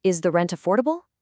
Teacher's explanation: instead of falling, the voice goes up. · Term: rising tone